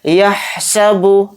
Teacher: ہا کو اچھے سے حلق سے نکال کر ادا کریں گے. یحسب اس طرح سے, کوئی بھی حرف اس میں نہیں کھینچے گا.